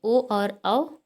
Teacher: ओ और औ कंठोष्ठ वर्ण है, इनका उच्चारण स्थान क्या है, कंठ ओष्ठ